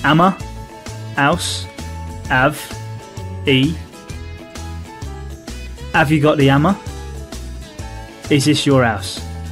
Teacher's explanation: One of the key features of the Cockney English accent is the dropping of the H sound at the start of many words.